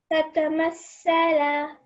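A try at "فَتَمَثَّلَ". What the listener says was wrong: Just be careful because you're prolonging this fatha. So with this lam, you're prolonging this lam. It only has fatha. So fatamathala.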